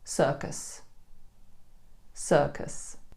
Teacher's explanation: we replace the U with Schwa. So the natural pronunciation is circus, circus. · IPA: /ə/